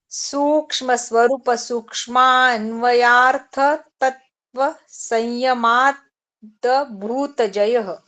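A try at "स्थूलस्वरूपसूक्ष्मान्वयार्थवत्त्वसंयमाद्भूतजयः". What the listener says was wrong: तत्व नहीं है, वत्व है। कैसे? स्थूल स्वरूप सूक्ष्मान्वयर्थत्व संयमात् भूत जयः।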